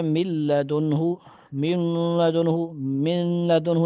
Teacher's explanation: اور جو 2 رہ گئے یعنی را لام، ان میں غنہ نہیں ہوتا، جیسے من لدنہ، ٹھیک ہے جی، نون کی جگہ بالکل لام پڑا جائے گا یا را، اور مثال اوپر گزری ہے، اس میں ناک میں ذرا بھی آواز نہیں جاتی، خالص لام کی طرح پڑھتے · دیکھو نون کو لام بنا کر دونوں لام کو ایک کر دیا ہے، چنانچہ پڑھنے میں صرف لام آتا ہے، اگرچہ لکھنے میں نون بھی باقی ہے، مگر ان 6 حرفوں میں اتنا فرق ہے کہ ان میں سے 4 حرفوں میں تو غنہ بھی ہوگا، یعنی کیا ہوگا، ادغام مع الغنہ، اور یہ غنہ مثل نون مشدد کے بڑھا کر پڑھ جاتا ہے۔